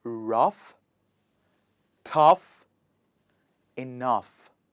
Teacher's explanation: o-u-g-h in each of these words is pronounced as /af/